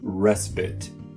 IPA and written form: ˈrɛs pɪt (respite)